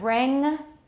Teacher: The velar nasal at the end of ring